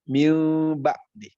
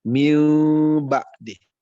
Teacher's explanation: Jadi terbuka sedikit bibirnya, miu ba'di, selembar kertas bahasanya, ya, tidak ditutup dengan rapat, ya. Jadi perlu mencontohkan, saya contohkan barusan ya, miu terbuka sedikit, miu bunyinya beda, samar. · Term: Iklab